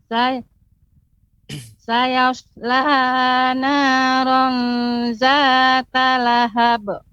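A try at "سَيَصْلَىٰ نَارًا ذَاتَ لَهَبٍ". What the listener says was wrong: Kemudian sayasla ini juga Ibu agak terasa lebih panjang. Namun cukup tadi seperti ma'aghna, yaitu cukup diayunkan saja, ditekan. Sayasla naran zata lahab.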